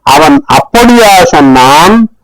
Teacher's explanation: அவன் அப்படியா சொன்னான், the stress is on the method of saying